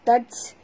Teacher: bunyikan hamas pada ta yang mati